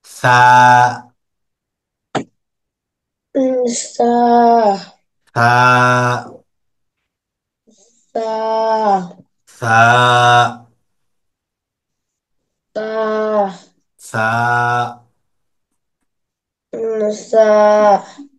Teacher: সাটা হলো জিহ্বার আগা উপরের দুই দাঁতের আগাতে লাগবে।